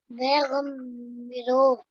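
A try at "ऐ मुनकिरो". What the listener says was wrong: ए मुनकिरो ऐसे ए मुनकिरो। बे नहीं भाई, ए देखो ये ए मुनकिरो। मुनकिरो मीम से, मीम नून काफ मुन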